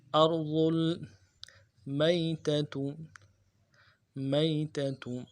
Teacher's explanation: میتہ میں یا لین ہے، بغیر کھینچے پڑھیں گے، اور دونوں تا کو نرمی سے پڑھیں گے۔ · لفظ ارض میں را کو موٹا کریں گے، حمزہ کو را کے ساتھ ملائیں گے، اور ضاد کے پیش کو آگے لام کے ساتھ ملائیں گے۔